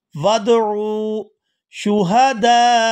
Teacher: आइन को वाव साकिन के साथ मिलाएंगे तो खींचकर अदा करेंगे क्योंकि ये वाव मद्दा है